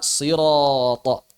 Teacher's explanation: orang-orang Arab berat mengucapkan Sin Kenapa karena setelahnya ada Ro dan tho maka mereka mengucapkan Shad kita baca sirath dan seterusnya banyak perubahan-perubahan atau iqlab yang terjadi